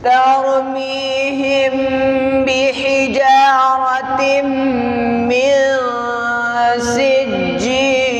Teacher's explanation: اخفاء شفوی کا مطلب یہ ہے کہ دونوں ہونٹ میم میں بند ہوں گے اور میم کی آواز کہاں لے کر جائیں گے؟ ناک کی جڑ میں لے کر جانا